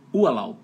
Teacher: Termina com B de bola, mas o som é de P de pato, um P mudo, né?